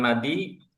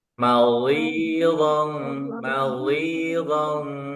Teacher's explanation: Maldi, jangan madi, lidahnya tarik lagi ke dalam karena lidahnya harus tempelin ke geraham.